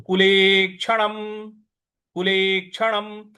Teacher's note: ले के बाद जो छ क्षत्रिय वाला है उस पर हमको थोड़ा सा आघात देना है।